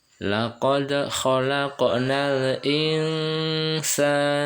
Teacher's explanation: ikhfa hakiki, dibaca antara samar-samar dan mendengung selama 3 harokat